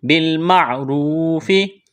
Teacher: بِالْمَعْرُوفِ، را واو پیش رو، واو مدہ ہے، ایک الف کے برابر کھینچنا ہے، را کو موٹا کرنا ہے، پیش ہے را کے اوپر۔